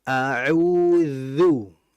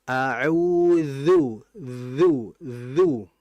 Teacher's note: Kita rasakan ketika nempel antara gigi dengan lidah itu ada getaran. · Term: zal